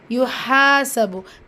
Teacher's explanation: ஹால் அலிஃப் மதா இருக்குது, 2 ஹரக்கத்தளவு நீட்டம் கொடுத்து ஓதுங்க